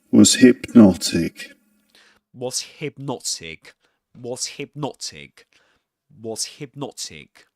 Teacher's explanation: The stressed syllable in the word hypnotic is the second syllable.